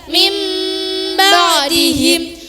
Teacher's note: Cara membacanya, nun mati atau tanwin diganti atau ditukar menjadi suara mim. Contoh, nun mati bertemu ba. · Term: Iqlab